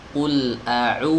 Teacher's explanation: Maka wau itu adalah u yang dipanjang bukan huruf W. Wau itu bukan huruf W wau madiah.